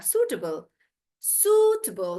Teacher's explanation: So I'm stressing on su, and then the rest of it becomes table and not table.